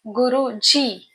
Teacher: So it becomes Omkar. Guruji, Gu with a short Hindi vowel U, Ru with a short Hindi vowel U, Ji with long Hindi vowel E